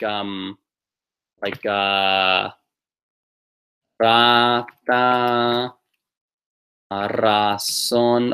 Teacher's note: It's a rolled, a nice roll. Pretend it's like 2 R's in a row